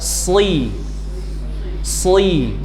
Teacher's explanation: Ingat-ingat suara desisnya es ditebalkan si si. Jadi bentuknya sh diberi kasrah shi. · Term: huruf shad